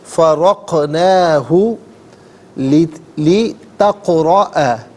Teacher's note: ناظرین فرقنا میں را پر زبر ہے، را کو پر کر کے پڑھیں گے، نون کھڑا زبر نا اور نون الف زبر نا دونوں طریقوں سے پڑھنا درست ہے۔ اور قاف ساکن ہے لیکن یہاں قلقلہ ہوگا، یعنی ادائیگی میں آواز لوٹتی بھی محسوس ہونی چاہیے۔